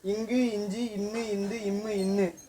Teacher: எழுத்துக்களும் பிறக்குறப்ப மூக்கு வழியாக பிறக்கும் சரிங்களா இக்கு இங்கு இஞ்சி அப்படின்னு சொல்றப்ப ஒளி வந்து மூக்குல இருந்து வரமாதிரி இருக்கும் அதனால இதை வந்து மூக்கொளின்னு கூட சொல்லுவாங்க இவைகள்தான் மெல்லினத்தோட விளக்கம் சரிங்களா இதுக்கு